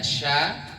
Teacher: sya letaknya di tengah lidah bertemu dengan langit-langit atas dan dia punya sifat tafasi tafasi itu nafasnya hebas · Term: huruf sya